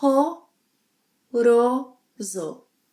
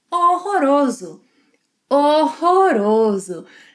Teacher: here we have a silent H, guttural R, a tap, and a Z sound.